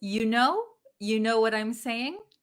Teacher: instead of saying you, we're going to pronounce it as ya.